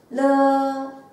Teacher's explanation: たでしょうか。下の唇と上の歯を軽く接触します。フォー、フォー。はい、次は、ドゥ、ドゥ、口を開きます。この口を開くときに歯を噛まないように注意してください。ドゥ、ドゥ。次のこれは、プープープーの発音するとき空気を吹き出すように、このときは舌、上の歯の根元のあたりに来て一回接触すると離します。プープー。はい、次は、ぬーぬー、これは鼻から発音するように、ぬーぬー。はい、最後の一個、るーるー、このるーを発音するときに下、 上の歯の根元のあたりに一回接触してすぐ離れるように